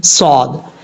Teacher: صاد حروف مستعلیہ میں سے بھی ہے، پر بھی پڑھا جائے گا فل ماؤتھ، اور یعنی ہیوی ساؤنڈ جس کو کہتے ہیں، ہیوی ساؤنڈ بھی پڑھا جائے گا اور سیٹی کے ساتھ پڑھا جائے گا